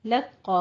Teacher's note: आपने लाम को बारीक रखना है, कौफ को पुर कर देना है